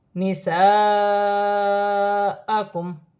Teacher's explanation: الف مدہ بھی بن رہی ہے اور بڑی مد بھی ہے، مد متصل، 6 الف کی مقدار دونوں کو ملا کر پڑھا جائے گا